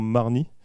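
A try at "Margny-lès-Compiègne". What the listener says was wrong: Marny, les Compiègne, on dit. faut pas l'oublier, c'est pas Marny, c'est Marny les Compiègnes.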